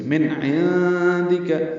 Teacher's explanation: یہاں پہ اخفا ہے نون ساکن کے بعد دال آنے کی وجہ سے، عین وسط حلق سے ادا ہوگا، من عندک، دال کاف جلدی پڑھیں گے۔